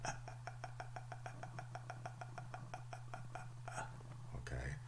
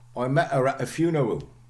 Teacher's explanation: your glottis, this is the gap between your vocal cords, is closed. Okay, then the air builds up and is explosively released. Okay, producing a sound like a. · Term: glottal stop